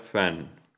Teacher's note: Y luego tenemos el sonido F, que es voiceless, labiodental fricative.